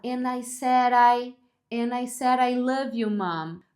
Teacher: se o D está entre vogais, entre sons de vogais, é que ele pode virar um R de arara